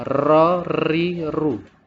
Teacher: Jadi getarnya dalam pengucapan huruf ra yaitu berlebihan, itu tidak betul. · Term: getaran yang berlebihan